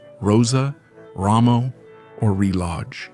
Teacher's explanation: the initial R in a word is always rhotic, strongly trilled